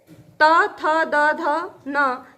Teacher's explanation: ये त वर्ग के तत्व हैं जो दंत से बोले जाते हैं